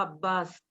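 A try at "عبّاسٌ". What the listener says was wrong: Abbasun. Abbas, you are right. But for the sake of reading, we will be pronouncing the last letter sign also.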